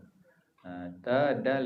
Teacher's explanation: ujung lidah dengan pangkal gigi kacip tu kongsi dengan dal